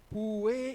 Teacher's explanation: Y para pronunciar la U, la lengua tiene que irse hacia atrás, porque la U es velar, pu, y luego tiene que abrir y subir la lengua, porque es una palatal, la E.